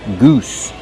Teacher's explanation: Use the long oo like boot and food. Goose. Plus the S sound with no voice.